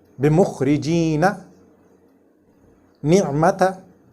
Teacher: This noon or meem is read with the shortest ghunnah, which is naturally present in these letters, meem and noon.